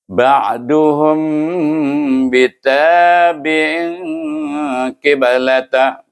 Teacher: berdengung dua harakah ifa iaitu bunyinya lebih kepada huruf mim bukan pada huruf ba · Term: ifa syafawi